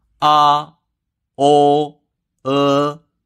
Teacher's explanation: The first tone is high and flat, with a tonal value of 5/5